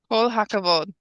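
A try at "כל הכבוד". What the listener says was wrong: That's it.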